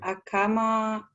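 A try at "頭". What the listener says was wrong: sorry, atama. Atama. with a T.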